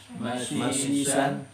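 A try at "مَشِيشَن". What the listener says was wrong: pakai shin tebal ya. Mashishan Ini mirip dengan sot ya. mirip sin atau sod. Kalau dibaca sin saito. Kalau dibaca sod soito. Yang sahih syaito.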